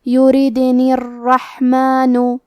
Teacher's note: کلمت الرحمن میں را پہ تشدید ہے تو ہمیں 2 حرف کے برابر را کو پڑھنا ہے۔ ہا کی ادائیگی حلق کے درمیان والے حصے سے ہے، کیونکہ یہاں ہا ساکن ہے تو ہمیں ہا کو ظاہر کرنا ہے۔